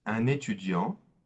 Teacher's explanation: notice that we don't pronounce the T at the end